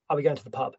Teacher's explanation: the stress is on Pub